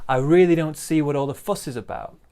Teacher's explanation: big stress on fuss